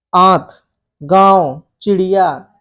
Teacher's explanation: इसमें क्या होता है? अनुनासिक जो है इसमें वायु नाक से बहुत कम निकलता है तथा मुख से बहुत ज्यादा वायु निकलती है